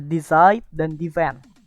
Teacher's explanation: primary itu berada di suku kata kedua